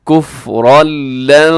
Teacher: یہاں پہ ادغام ہو رہا ہے بغیر غنے کے، تنوین کے بعد لام ہے